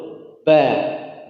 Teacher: Ba ada asyiddah, dia tertahan, tekan dulu. Ba, enggak hams, enggak keluar napas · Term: huruf ba